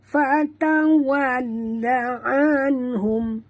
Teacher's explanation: nun mati bertemu ha ya, izhar halqi, bacaan jelas tanpa dengung ya. Anhum ya.